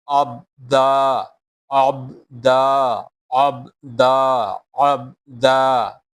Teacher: While reading Ain, the sound will comes from the middle of the throat.